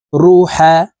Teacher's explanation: র এর উপরে পেশ আছে তাই এই র কে মোটা ভাবে পড়তে হবে